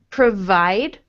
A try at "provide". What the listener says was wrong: Now, your V is more like the W sound in that word. So, with the V sound, I want you... So, with the W sound, the sound that you are making is more like provide, but we want provide.